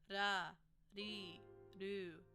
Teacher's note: We want this to be more of a soft R, pronounced almost like a D or an L. We don't really want this to be a super enunciated R when we pronounce it.